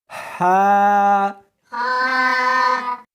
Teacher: اس کو حلق میں سے نکالنا ہے اور ساتھ میں ہوا بھی ہونی چاہیے